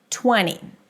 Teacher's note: I'm not pronouncing the T here because the T after an N is often dropped, especially in popular words and especially if I want to speak fast.